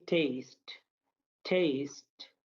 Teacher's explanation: पहले वाला ठ बोला जाएगा, आखिरी वाला ट बोला जाएगा। पहले वाले में ह ऐड होगा, आखिरी वाले में नहीं होगा।